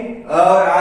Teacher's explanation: अ और आ है कंठीय ध्वनि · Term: कंठीय स्वर